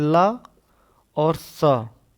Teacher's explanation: ला और स दांतों की सहायता से बोलते हैं। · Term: दंतव्य सा